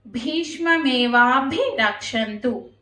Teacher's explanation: రక్షంతు భి అనేది మహాప్రాణక్షరం వాభి ఆ భి కూడా మహాప్రాణ అక్షరమే అండి రక్షంతు ఆ క్షంతు ఆ సున్నా దగ్గర ఎన్ సౌండ్ తో పలకాలండి